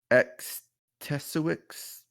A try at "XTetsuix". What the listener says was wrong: X's are silent.